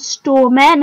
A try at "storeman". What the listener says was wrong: Storeman. You said storemen.